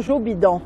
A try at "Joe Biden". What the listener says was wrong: Ben oui, Joe Bidon, c'est Joe Biden. Ben, on le prononce habituellement Biden, pas Bidon.